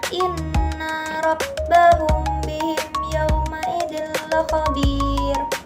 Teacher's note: Ikhfa syafawi adalah mim mati yang bertemu dengan huruf ba. Dibacanya samar-samar di bibir sambil didengungkan ke huruf mim.